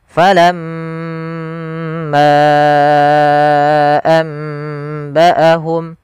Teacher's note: Ghunah. Yaitu membaca dengan mengalirkannya ke rongga hidung kita atau membunyikan dari rongga hidung kita. Maka falam m r longga hidung kita bergetar sambil ditahan dengungannya.